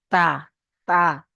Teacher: তাটা জিভের আগা, এই জিভের আগা এবং সামনের উপরের দুই দাঁত, এই দাঁতের সঙ্গে লাগিয়ে উচ্চারিত হবে